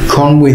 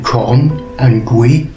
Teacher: literally means the chief river it comes from corn and gui the g drops off when it's attached to the word con